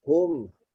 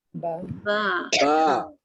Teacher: Mim hanya sentuh. Dia rapatkan sangat. Hanya sentuh sahaja. Tapi ba ditekan.